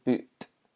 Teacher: I may have a clear kind of T sound at the end of my word